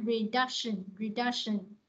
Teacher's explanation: Ví dụ mình đọc là reduction, nó re nè, reduction là nó có ba âm tiết và nó nhấn âm hai ha